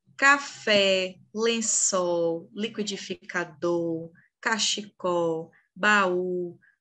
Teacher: todas essas palavras independente do tamanho delas possuem a última sílaba como tônica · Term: oxítonas